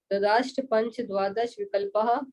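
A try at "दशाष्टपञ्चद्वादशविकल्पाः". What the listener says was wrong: नहीं, दशाष्ट। हाँ, आपके मुंह से ददाष्ट निकल गया।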